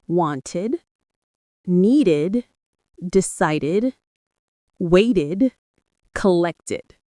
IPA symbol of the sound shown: ɪd